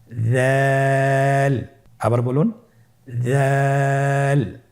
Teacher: উচ্চারণ করার সময় অবশ্যই 3 আলিফ টেনে পড়তে হবে। দালের মাখরাজ হলো জিহ্বার আগা সামনের উপরের 2 দাঁতের আগার সঙ্গে লাগিয়ে উচ্চারিত হয়।